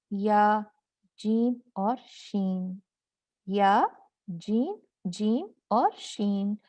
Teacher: 3 جو حروف ہیں وہ زبان کے درمیانی حصے وسط اللسان میں سے نکلتے ہیں